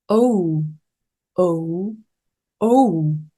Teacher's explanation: 그냥 오가 아니라 입 좁게 모으신 다음 오우 입술을 당겨 주셔야 합니다